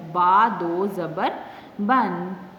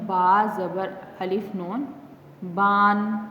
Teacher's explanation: ایسا نہ ہو کہ ہم اس کو پڑھ رہے ہیں تو جو ہے وہ با کو ہم لمبا کر دیں اور آخر میں جو نون ہے اس کو صحیح جو ہے وہ سیدھا پڑھیں، اس کو لمبا نہ کریں